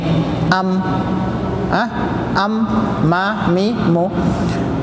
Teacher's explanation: اور دونوں ہونٹ کے خشک جگہ سے میم